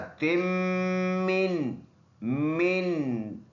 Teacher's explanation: ता और मीम मिला के सख्ती के साथ